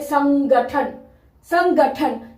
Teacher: क वर्ग का आखिरी पांचवा वर्ण ंग होता है इसलिए यहां पे ंग की साउंड आ रही है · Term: न की साउंड